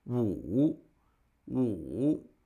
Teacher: that's a falling and Rising tone